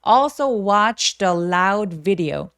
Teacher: also 올소가 아니라 어 하면서 턱을 길게 벌려 주세요